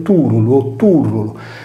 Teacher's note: Il turlo disegna anch'esso una cupola, detto turulo o turrulo, perché la R è liquida e in questo caso si è spostata in avanti di una sillaba